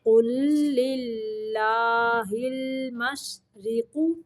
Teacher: دیکھیں قاف پیش لام، قل لام زیر لام لل، قل للہ، یہاں پہ اللہ کا لام باریک پڑھیں گے